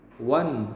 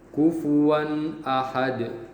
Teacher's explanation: dia tidak ada panjangnya atau gunahnya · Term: izhar halqi